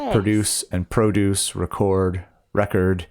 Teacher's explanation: the verb form has the emphasis on the second syllable and the noun form has it on the first